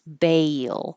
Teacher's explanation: you want a bail and bail is almost two parts ba your tongue's very high and then it slides down and up for the L